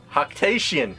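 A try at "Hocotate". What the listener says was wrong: Hoctotation. Hoctotation. No, it's not Hoctation. It's Hoctotation. Because there's two T's.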